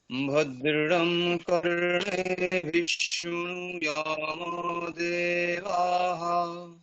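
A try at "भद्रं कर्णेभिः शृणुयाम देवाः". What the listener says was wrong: Good.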